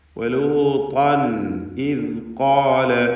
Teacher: ഇസ്തിഅലാഉണ്ട്. ത്വാഇൻ്റെ ഉച്ചാരണ സമയത്ത് നാവിൻ്റെ പിൻവശം ഉയരും എന്നതുകൊണ്ടാണ് ഇസ്തിഅല എന്ന സിഫത്ത് അതിനുണ്ടെന്ന് പറയുന്നത്.